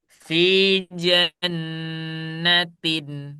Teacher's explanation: Jadi suara nun yang ada di tanwin ini dia jelas. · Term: Suara nunnya yang jelas